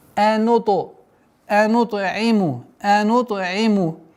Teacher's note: полноценная калкаля с та, звук та применяем, потому что звук та относится к 5 звукам калкаля